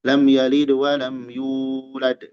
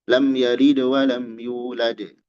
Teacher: Yulad. Dua harokat. Mad tabi'i itu dua harokat. Dua harokat.